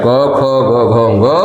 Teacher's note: जीभ का पिछला भाग जाकर के कंठ पे स्पर्श कर रहा है, लगभग कंठ जहाँ से माना जाता है कि हाँ यहाँ से आता कंठ है, जो श्वास यहाँ से नली है उस जगह पे जाके अवरुद्ध करती है और जब नीचे आती है तभी उच्चारण होता है।